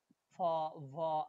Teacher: are made with the contact of the lower lip and the upper frontage